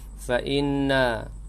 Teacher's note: wajibul gunnah dengung pada nun yang tasydid